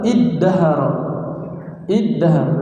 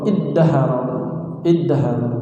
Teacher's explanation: Dal dan ta itu berdekatan makhrajnya.